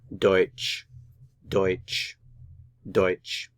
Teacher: The stress is on the diphthong here, the two vowels together.